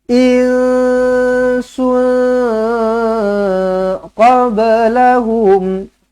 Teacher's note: Dua-duanya ikhfa hakiki. Lidah jangan naik. Lidah jangan naik ke atas. Insun qablahum.